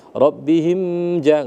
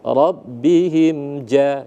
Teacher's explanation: Udah pas, udah benar kita baca izhar, tidak boleh didengungkan, ya. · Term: izhar syafawi